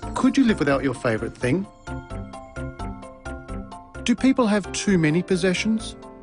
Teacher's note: Rising intonation patterns are used for these questions. Did you notice the pitch of his voice rise at the end of the questions?